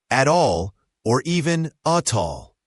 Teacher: At all often links together. The T in at is often a flap T or disappears, and the A links to all.